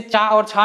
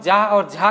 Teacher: चा और छा में अगर हम देखें तो ज्यादा कोई विशेष झनकार नहीं मालूम होती है, लेकिन जब हम जा और झा कहते हैं तो ज्यादा झनकार पैदा होती है